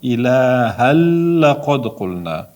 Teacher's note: Tanvindan keyin lam harf keldi. Lom harfi idg'om harflan bo'lgani uchun tanvinni lomga olishtiramiz.